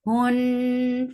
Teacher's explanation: Noon will get sifa of ghunnah. This is akmal, so keep the sound in your nose for a longer time.